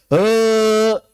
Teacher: He pegang he bergetar pita suaranya bergetar. Itulah cara menggetarkan pita suaranya.